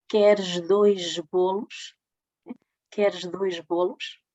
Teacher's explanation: No entanto, quando o S está antes de uma consoante sonora, este ch em final de palavra articula-se j